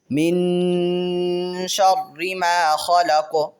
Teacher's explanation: من پہ چونکہ نون ساکن ہے تو یہاں پہ غنہ کریں گے